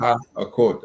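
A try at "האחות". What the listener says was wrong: ha, and then wait, achot. It's ha'achot. there's no pause there.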